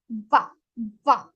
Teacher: But in Sanskrit, we have va, va. Now, when we say va, our teeth and lips both are involved here.